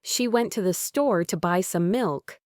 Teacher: For example, if a speaker says, "She went to the store to buy some milk," you'll notice that the words she, went, store, buy, and milk are stressed.